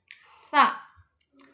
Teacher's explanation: tsa asnani atau gigi ya menggigit di antara dua gigi.